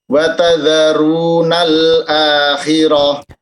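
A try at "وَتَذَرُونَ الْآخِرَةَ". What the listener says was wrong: Afwan, diulangi, wa tadharunal Lamnya agak perlahan ya maksudnya. Tidak perlu agak menghantak. Wa tadharunal wa tadharunal akhirah. Tadi kayaknya lam sukunya agak ngegas sedikit ya, nggak masalah sebetulnya. Ya di sini mungkin khawatir masuknya kepada nabar ya.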